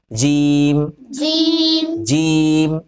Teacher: جیم کا مخرج زبان کا بیچ اور اس کے مقابل اوپر کا تالو، یہ زبان ہے، زبان کا بیچ اور اس کے مقابل اوپر کا تالو لگاؤ.